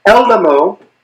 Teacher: the stress would go in the first syllable because the second syllable is just AM, it's a short syllable